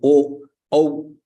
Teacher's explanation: If you say o, au, you are using kantha and lips. O, you circle your mouth. O, au. The sound is coming from throat only, but you are using the lips also. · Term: kantoshtam